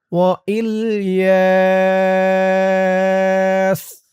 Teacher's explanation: এই তো চিহ্নতে যদি অক্ফ করেন তাহলে পড়বেন ওয়া ইলিয়াস। জবরের পরে খালি আলিফ, এক আলিফ টানটা ৩ আলিফ হয়ে যাবে। ইয়া বলে ৩ আলিফ টান দিয়ে এই সিনকে ধরতে হবে।